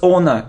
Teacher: we don't pronounce h it's like hour not how hour okay so surprised report surface · So we don't pronounce H.